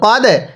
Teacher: এরপরে কফ দাল জবর কদ, দালে যদি সাকিন হয় কলকলা করে পড়তে হয়।